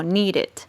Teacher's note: d n por lo tanto como es un verbo regular y le agregamos Ed en la escritura pues entonces Esta última partecita suena como ID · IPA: /id/